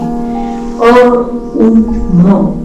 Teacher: अ म्हणताना आपले ओठ विलग होणार आहे आणि आवाज घशातून येणार आहे. उ म्हणताना ओठांचा चंबू आणि म म्हणताना ओठ पूर्णपणे बंद. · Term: ओंकार